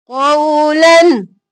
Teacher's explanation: यहाँ पर आगे गौइन है तो हम लन नहीं करेंगे कौलन इजहार करेंगे